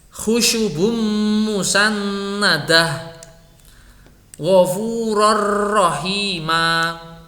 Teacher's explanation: tanwin tersebut harus diidghamkan dengan idgham kamil pada huruf sesudahnya.